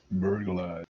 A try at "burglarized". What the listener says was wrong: Not burger like a hamburger. Yeah, we do say the L.